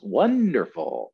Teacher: this is three syllable word one dur full and the first syllable gets the stress